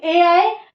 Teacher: ए दे तो कंठ तालु, ए आए कंठ तालु से, ए आए यानी कि गले में भी पड़ेगा और तालब में भी लगेगा।